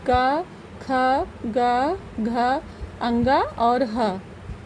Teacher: यानी क वर्ग के सारे और ह, ये सब हमारे कंठ से उच्चारित होते हैं या कंठ से उच्चारित होने वाले वर्ण या अक्षर कहलाते हैं।